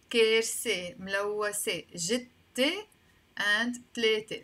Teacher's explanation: In Lebanese Arabic, this th sound, a lot of times we pronounce it either as a t or as a sin, s or t.